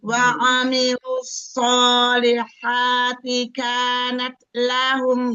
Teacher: jangan kanat itu lebih dari 2 ketuk, jangan panjang-panjang